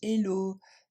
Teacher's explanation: il faudra du coup bien prononcer le H les Français ont tendance à l'enlever